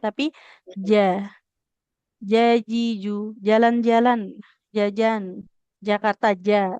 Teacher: Kalau makrotnya tadi ya, tengah lidah menekan ke langit-langit atas. Jadi tengah lidahnya itu memang menekan. Karena sifatnya syiddah, tertahan aliran suara. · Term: huruf jim